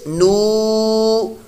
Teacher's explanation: نون واو پیش نو, یہ واو مدہ بن گیا, لمبا کریں گے ایک الف دو حرکات کے برابر